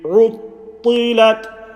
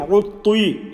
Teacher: Remember ta, you are not circling your lips. You're not saying ruttui.